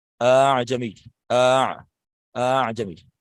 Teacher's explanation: عام طور پہ ایسا حمزہ کے ساتھ ہی ہوتا ہے. اعجمی، اتنی لمبی مد نہیں کریں گے کہ وہ مد ہو جائے، لیکن اس کو اس طرح سے پڑھیں گے کہ حمزہ بھی محسوس نہ ہو